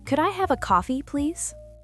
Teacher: Listen to the intonation. It goes up on have, then down on please.